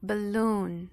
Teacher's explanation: o stress essa parte mais forte a tônica ela vai ficar Justamente na segunda segunda sílaba